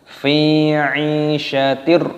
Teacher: kasroh tanwin bertemu dengan ro. Ini hukumnya dibaca idgham bila gunnah, dimasukkan tanpa berdengung